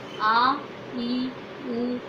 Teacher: जिन स्वरों के उच्चारण में ह्रस्व से दुगना समय लगता है उन्हें दीर्घ स्वर कहते हैं